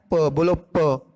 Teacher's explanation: जब आप प बोलते हो तो आपके दोनों लिप्स के क्या है? बंद हो जाते हैं, आ गई ना रुकावट, तो ये होता है कॉन्सोनेंट साउंड्स।